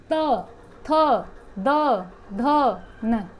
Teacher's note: दंत मीन्स ये नहीं दांतों से बोल, नहीं, दंत मीन्स जो हमारी जीभ है वो दांतों को टच होएगी